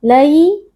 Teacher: ada ya sukun yang sebelumnya berharakat fathah Ya Sukun kita baca dengan lunak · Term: Lin